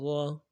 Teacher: را کو موٹا کریں گے ، را زبر را، عبرا، تا دو پیشتن، تا دو پیشتن،